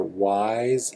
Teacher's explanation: Or wise, even though it ends with an S, it ends with an S, but that S should sound like Z